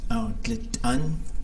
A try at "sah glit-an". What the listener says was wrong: I think it's sah glit-an, like low tone sa. Without the high tone over the A. Oh, the other A.